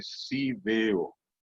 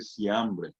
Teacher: la F normalmente en Paraguay se sustituye por la S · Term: sustitución